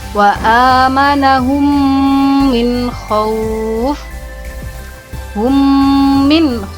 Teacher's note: maka cara membacanya adalah dengan mendengung sebanyak tiga harokat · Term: idgham mislain